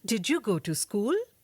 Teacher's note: The yes or no questions use a rising tone at the end.